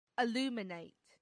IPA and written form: əˈluːmɪneɪt (aluminate)